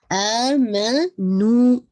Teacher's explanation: آ کو 2 کاؤنٹ اور نو کو 2 کاؤنٹ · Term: مد البدل